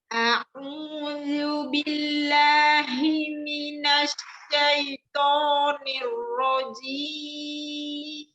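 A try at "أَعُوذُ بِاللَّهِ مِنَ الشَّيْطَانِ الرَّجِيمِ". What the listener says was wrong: Minasya, ada huruf sinnya tafasi ya. Jadi jangan langsung minasai, tapi minasyai ya, ya apa ya sukunnya diturunkan i syai ya.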